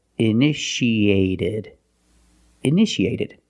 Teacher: The second T is between vowels, so we pronounce it like a fast D.